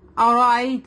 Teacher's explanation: را کو یہاں پر ہیوی پڑھیں گے. ٹھیک ہے, را کے بعد زبر ہے.